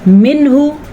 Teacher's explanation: نون ساکن کے بعد ہا آنے کی وجہ سے نون کو ہم ظاہر کر کے پڑھیں گے